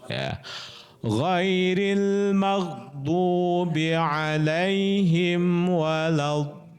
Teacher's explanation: Karena ada tasdidnya ya. Di situ mad thobi'i bertemu dengan tasdid maka dia harus panjang. Panjangnya en harakat. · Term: kilmi mussaqqal